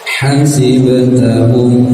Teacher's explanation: ha jangan ha ya, yang makhrajnya di tengah tenggorokan. Hasib, ba sukun, ba bagian dari huruf qalqalah yang ketika sukun maka harus dipantulkan ya.